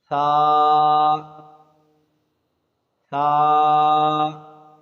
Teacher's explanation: जब भी सा अदा करेंगे तो ऊपर के दांतों को थोड़ी सी ज़बान लगाएंगे